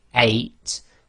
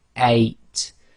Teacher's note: you should feel that your throat blocks a tiny bit right at the beginning that's known as the gloal stop so in Arabic that's represented